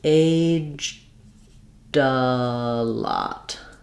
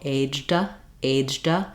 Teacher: It really sounds kind of like aged a lot. That D sound that makes it past tense can link to the next vowel